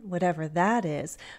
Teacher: whatever that is and listen to my intonation whatever that is so I'm going up and then down my stress is on that